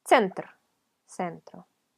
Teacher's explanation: Es una T. T y S pronunciadas juntas, rapidito.